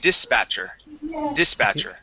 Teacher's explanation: The accent's going to go at the very beginning of the word.